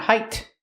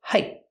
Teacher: We hear the T in height pronounced as a stop T.